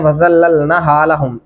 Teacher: नून को लंबा करेंगे, उसके ऊपर खड़ी ज़बर है